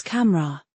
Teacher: The middle vowel often disappears. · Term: elision